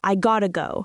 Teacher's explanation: The to becomes very weak or disappears completely.